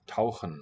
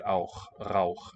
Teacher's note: in a verb, say, to dive, tauchen, you would get auch with the velar